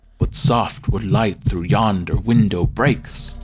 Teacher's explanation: The alternating stress amongst each syllable literally gives this line a heartbeat. It gives this line life.